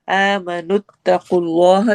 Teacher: اور یا مدہ کرنا ہے، آمنوا اتقوا اللہ، آمنوا اتقوا اللہ اس میں جلالہ موٹا ہوگا، قاف کو موٹا پڑھنا ہے